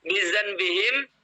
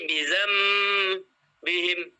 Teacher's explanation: Apa yang dibalikkan yaitu nun mati apabila di depannya ada huruf ba. Nun mati atau tanwin bertemu huruf ba, maka nun matinya menjadi huruf mim. Misalnya bizan bihim menjadi bizam bihim. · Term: iklab